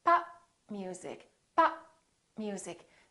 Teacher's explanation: Instead, you need to say pop music, pop music. So I didn't release my lips. I said pop. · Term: stop